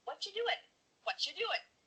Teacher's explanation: the end of the word doing, that G, also gets cut out.